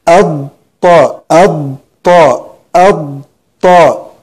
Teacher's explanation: هذه ضاد هي خالصة بها صفة الاستطالة